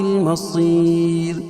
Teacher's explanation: وَإِلَى اللَّهِ الْمَصِيرُ، اللہ کے لام سے پہلے زبر یہ پیش ہو تو اللہ کا لام پر پڑھا جاتا ہے، مصیر صاد کو پر پڑھیں گے، اور وقف کی صورت میں یہ را باریک پڑھی جائے گی، کیوں؟ رائے ساکنہ سے پہلے یا ساکن ہو تو رائے ساکنہ ہر حال میں باریک پڑھی جاتی ہے۔